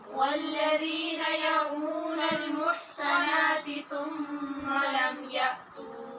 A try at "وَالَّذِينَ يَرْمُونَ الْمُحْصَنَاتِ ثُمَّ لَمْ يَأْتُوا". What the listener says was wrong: محصنہ اور ثم دونوں کی آواز ایک سی آ رہی ہے، یہ غلط ہے. صاد میں تو سیٹی کی آواز پیدا ہونی چاہیے اور سا کو نرمی سے بغیر سیٹی کی آواز کے پڑھنا چاہیے. والذین یرمون المحصنات محصنات ثم لم یأتوا